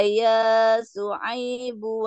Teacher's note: yaaib itu panjang dua harakat